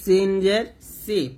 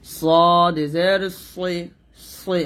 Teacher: এটা হলো সিন জের সি পাতলা, আর এটা মোটা করে বলতে হবে সদ জের সই, সই এরকম। তারপরে তাজের তি, আর এটা হবে তজের কই মোটা করে, তজের কই।